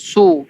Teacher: Sad dia kalau baris depan baru muncung mulut.